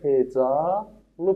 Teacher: sondakı A səsi uzun tələffüz olunacaq · buna samitlə başlanan şəkilçi əlavə olunduqda sondakı a səsi uzun tələffüs olunacaq. Misal üçün hecalı yazsam olacaq hecalı formasındadır. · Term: uzanma